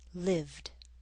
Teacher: A voiced consonant like v in live will make the ed ending sound like a d, lived.